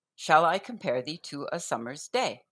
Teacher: each line consists of 10 syllables arranged in five pairs of unstressed and stressed